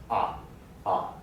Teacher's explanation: Ah is low and kind of in the middle. The tongue is just ah, ah, okay?